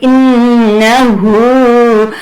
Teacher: اور پھر آپ نے گنہ کرنا ہے نون مشدد پہ